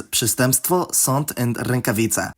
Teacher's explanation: For one, if they’re in the middle of a word, followed by certain consonants (which vary by dialect), but especially plosives, the nasal vowels “decompose” to an oral vowel followed by a nasal consonant in the same mouth position as the consonant after it. For example, there’s przestępstwo, sąd, and rękawica.